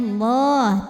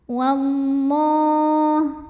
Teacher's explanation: lam pada lafaz Allah dibunyikan secara tafkhim karena sebelumnya barisnya fathah, maka dibacanya Allah tebal, pangkal lidah angkat. Wallah, alif lamnya dinamakan dengan alif lam syamsiyah karena alif lam menghadapi huruf syamsiyah yaitu lam.